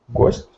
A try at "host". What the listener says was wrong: Host, yes. Host, not ghost, but...